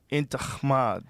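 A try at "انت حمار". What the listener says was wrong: But see, you're saying kh. It's h.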